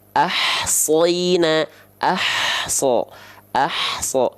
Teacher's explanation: jadi H kecil dilafalkan dari tengah tenggorokan teman-teman sekalian ditekan ditekan